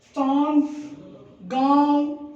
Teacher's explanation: जब उच्चारण करते हैं तो आवाज़ नाक और मुंह दोनों से निकलती है, उन्हें हम अनुनासिक कहते हैं।